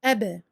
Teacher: pour le ba, ce sont les lèvres en fait qui se touchent, et on rouvre les lèvres aussitôt. Sans aucune durée entre la fermeture et l'ouverture des lèvres. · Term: qalqala